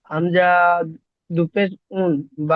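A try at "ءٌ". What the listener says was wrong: হামজা, হামজা টান হয় না, আপনার হামজা টান হয়ে গিয়েছে। হামজা দুপেশ উন।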